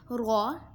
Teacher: رو زبان کی نوک اور مقابل کے تالو سے ادا ہوتا ہے۔